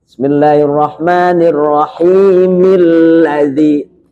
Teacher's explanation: Dengan mi alladzi, karena a-nya hamzahnya wasal.